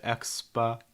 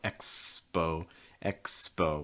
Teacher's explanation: it's a diphthong start with your mouth wide then close it small round lips front of your tongue down at the end and it's going